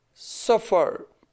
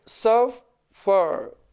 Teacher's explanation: सफ पर stress fall करता है